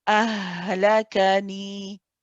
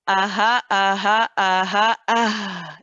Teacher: wherever the hamza is coming from at the bottom of the throat, you stay in that same location for the ha, and you do not squeeze. You do not tense anything in your throat.